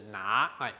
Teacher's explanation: 客家话的拿跟国语的拿刚好声调是一样的，都是拿，往上升哈